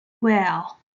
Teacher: The third tone of zhuyin and pinyin are all tones that fall first and then rise, like when we say the tone of well. It sounds down first then up.